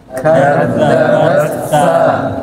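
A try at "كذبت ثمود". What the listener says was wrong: Lah salah. Bukan dileburkan. Bats pisah dia ba coba pisah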